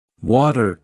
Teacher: the T sound between vowels often turns into a soft D sound. For example, water sounds like water. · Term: flap T